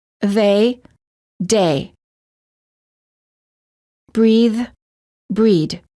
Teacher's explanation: some non-native speakers incorrectly pronounce the voiced th as a d the following words end up sounding the same